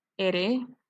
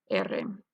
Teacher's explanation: The alveolar ere is shortened to the tap, ere, whereas in Catalonian, it might be more common to pronounce with a short trail, ere.